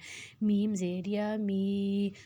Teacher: इसको नाक में नहीं लेके जाना, एम ई मी होता है ना वैसे पढ़ना है।